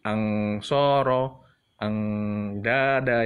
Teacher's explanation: Dada bukan ang ya, tapi nunnya ditarik sedikit. Gantung gitulah ya. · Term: ikhfa